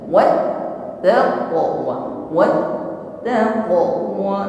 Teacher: menekan pada huruf ta tasydid nampak sifat syiddah, inhibas, jarayan shaut, tertahan bunyi hurufnya ketika kita mengucapkan huruf ta.